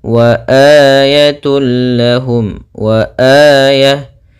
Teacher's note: untuk mad badal panjangnya adalah dua harakat